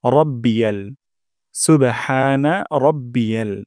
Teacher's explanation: সুবহানা সুবহানা তারপর রব্বিয়াল যেন এমনটা না হয় রাব্বিয়াল র মোটা করে উচ্চারণ করতে হবে